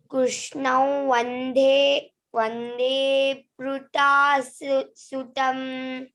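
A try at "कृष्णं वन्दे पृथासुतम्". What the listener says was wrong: Prutha, Mahaprana.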